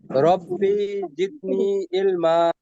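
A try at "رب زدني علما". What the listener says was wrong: বিতে টান হচ্ছে একটু ভাই, টান হবে না।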